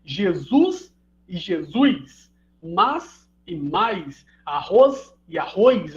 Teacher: a gente realiza um ditongo onde Teoricamente não havia né então principalmente em em sílaba travada com s